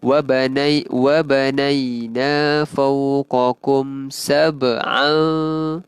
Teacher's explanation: Huruf ba kat situ qalqalah sughra. So lantunannya kecil.